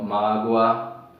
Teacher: Tem algumas sílabas na qual eles são pronunciados mais fraco, como exemplo, a palavra mágoa, ó, mágoa. Nessa palavra mágoa, veja que o O aí, ele não é uma vogal, ele fica como uma semivogal, porque o A aqui nessa palavra é que vai assumir o papel de vogal, que ele é o som mais forte.